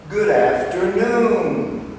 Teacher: the intonation and accent is on the last syllable